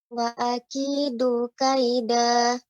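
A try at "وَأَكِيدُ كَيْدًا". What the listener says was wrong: Nah, Ibu ketika membaca wa akidu di sini aja ada jeda. Wa akidu atau ditekan ya sehingga jadi dua harokat, harus tidak ada. Jadi langsung dibaca wa akidu kaida. Jangan berhenti Ibu. Jangan berhenti pada kata Wa akidu kaida.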